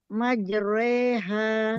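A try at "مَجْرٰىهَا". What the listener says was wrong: Nah, jangan re, majreha, tipis.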